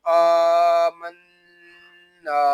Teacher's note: حمزہ کو ہم ایک الف تک کھینچ کر پڑھیں گے کیونکہ یہاں پہ کھڑا زبر ہے